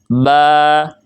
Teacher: با یعنی ہونٹوں کی تری والا حصہ اس میں شامل ہوگا